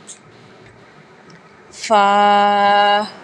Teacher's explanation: اوپر کے دانتوں کے کنارے اور نچلے ہونٹ کے تر حصے سے ادا ہوگا